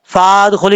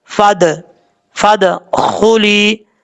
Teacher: اب اس کے بعد ہے فادخلی، دال میں قلقلہ ہے، فا کو جب دال سے کنیکٹ کریں گے تو بیچ میں جو الف ہے اس کو چھوڑ دیں گے